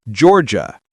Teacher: Georgia. Two syllables. The gia turns into j.